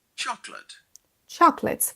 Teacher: Vous entendez bien l'accentuation sur la première syllabe